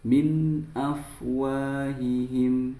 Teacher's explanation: Nah, kemudian di sini terdapat nun sukun bertemu dengan alif atau hamzah yaitu betul idhar halqi karena nun sukunnya terbaca dengan jelas